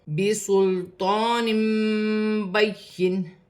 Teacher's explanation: 2 زیر کی تنوین کے بعد با آ رہی ہے، قرآن پاک میں جب بھی 2 زبر 2 زیر 2 پیش کی تنوین کے بعد با آئے گی تو وہاں چھوٹی سی میم لکھی ہوتی ہے، تو تنوین کی آواز کو میم سے بدل کر غنے کے ساتھ ادا کیا جاتا ہے